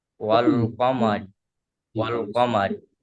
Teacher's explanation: মিমের উপরে যাবার এসছে ওটি হারাকাত, হারাকাতের পর তাড়াতাড়ি পড়তে হবে টান দেওয়া নিষেধ। রয়ের নিচে জের এসছে রটিকে বারিক করে পড়তে হবে